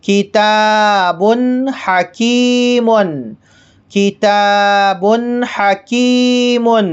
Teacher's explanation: یہاں دو پیش کی تنوین کے بعد ہا ہے، ہا حروف حلقی میں سے ہے، اس لیے تنوین کو ظاہر کر کے پڑھیں گے، غنہ نہیں کریں گے۔